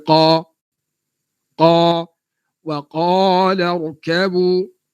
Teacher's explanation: Qaf ni ada tebal. Dia datang daripada pangkal lidah.